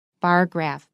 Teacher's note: The stress is on the first syllable. And also, it's contrastive. · 像这个地方 bar 它只有重音，那 graph 没有重音。